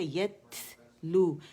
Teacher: یا جو ہے اس پہ زبر ہے، تا جو ہے اس میں ہمس ہے، یت لو، ہمس واضح کریں گے.